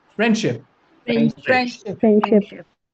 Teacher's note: D sound has to be dropped. The D sound. Drop it. · Don't say friendship. D sound has to be dropped.